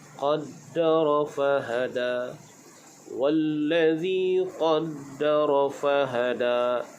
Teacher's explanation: Baik, dalam ayat ini kita berjumpa dengan huruf dal yang berbaris syaddah. Maka perlu pada penekanan.